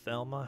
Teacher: Thelma has a high breathy th